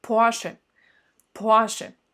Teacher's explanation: Le R, il n'est pas si sonnant en allemand. C'est presque un A.